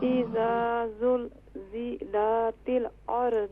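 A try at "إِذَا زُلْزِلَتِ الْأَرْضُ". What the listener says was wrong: اذا زلزلت نہیں، اذا زلزلت زیادہ نہ توڑا کریں. دیکھیں جب توڑتی ہیں نا تو پھر محسوس ہوتا ہے آپ ساری جگہ پر قلقلہ کر رہی ہیں. اذا زلزلت نہیں، اذا زلزلت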